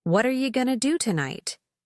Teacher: Notice how you becomes yah and going to becomes going to.